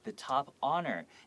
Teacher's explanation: even though it starts with an H, you don't hear the H. It just, you can, if you spelled it out the way that you heard it, it would be O-N-O-R.